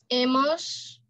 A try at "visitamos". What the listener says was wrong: Amos. No hemos. Amos.